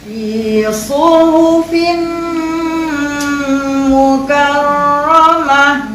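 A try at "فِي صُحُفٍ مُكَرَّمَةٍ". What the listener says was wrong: Mukar kak cik kena buka rahang cik.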